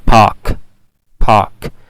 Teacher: मैंने इसमें जो है वो एस्पिरेशन ऐड किया · मैंने आर दरमियान में नहीं बोला और मैंने आ को थोड़ा